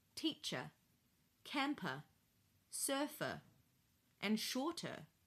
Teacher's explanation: the words teacher, camper, surfer, and shorter all end in the schwa sound